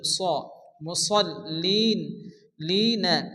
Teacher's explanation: এখানে স জবর স হবে এবং সদকে মোটা করে উচ্চারণ করতে হবে